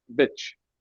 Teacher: There's not really much of a vowel sound there, just a little bitch, Okay. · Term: schwa